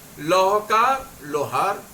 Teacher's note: लोहकार, लो पे हमने जोर दे दिया, लोहार हो गया। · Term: बलाघात